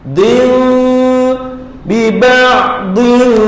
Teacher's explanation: Tak boleh baca nunnya tu. Jadi nun pada tanwin tu hilang, terus masuk standby nak sebut fa.